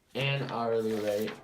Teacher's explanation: blank hourly rate the correct answer is an hourly rate because H is silent in the word hourly and hourly starts with a vowel sound